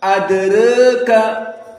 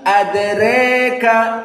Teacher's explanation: So Wars adraka is al-imalah as-sugro, the small al-imalah. But al-Kisai al-imalah al-kubro adraka.